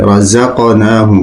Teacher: قاف میں قلقلہ ہے، جنبش کی آواز آنی چاہیے